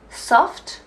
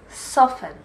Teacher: Soft, we say the t at the end, but soften, we don't.